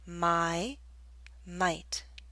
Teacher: The Y in my is longer because it's an open sound.